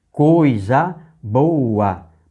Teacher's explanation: Coisa boa. Boa era 2 sílabas, passou a ser uma porque o que era hiato passou a ser ditongo.